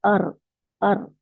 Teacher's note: صرف ایک دفعہ اس کی آواز کو جو ہے اس میں وائبریٹ کرے